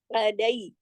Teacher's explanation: این کو حلق سے پڑھنا ہے. لئی, یا لین ہے, پورا حق ادا کرنا ہے.